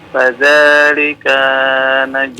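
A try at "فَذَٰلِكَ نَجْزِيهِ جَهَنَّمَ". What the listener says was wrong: Jangan dipanjangkan huruf kafnya, tidak panjang itu. Fadzalika najzi jahannam. Ka-nya jangan dipanjangkan ya.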